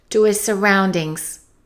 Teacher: Let's connect the 2 S's, his surroundings, and let's eliminate the H.